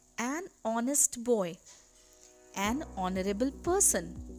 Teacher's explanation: In both these words, honest and honorable, the H is silent and the pronunciation comes of O, which is a vowel sound, hence we place an before them. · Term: silent H